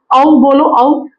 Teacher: आपके जो होठ है वो भी घूम रहे हैं वो भी आपके एक्टिव हो रहे हैं · और औ यानी हमारे कंठ से आवाज आ रही है लेकिन ओ हमारे जो होठ है वो भी खुल रहे हैं ठीक है और कंठ से भी आवाज आ रही है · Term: कंठ होस्ट